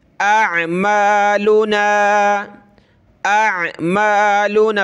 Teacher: पहले हमज़ा की आवाज़ फिर आइन की